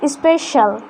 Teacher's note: But if C is followed by IA, then it sounds palatal sh. This one is palatal sh. It means our tongue will touch palate. This is not S.